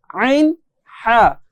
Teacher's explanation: মাঝখানের কন্ঠনালীর মাঝখান থেকে যদি একটু চাপ দিয়ে চেষ্টা করলেই কিন্তু এই দুইটা হরফ সুন্দরভাবে উচ্চারণ করা যায়।